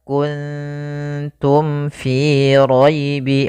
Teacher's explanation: Maka mim itu kan rapat ma. Maka di sini harus jelas suara mimnya tidak boleh ditahan. · mim mati itu kan makhrajnya daripada bibir kita, maka mim itu kan rapat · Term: izhar syafawi